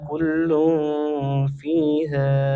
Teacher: kullun fiha tanwin bertemu fa hukumnya ikhfa dibaca samar dan dengung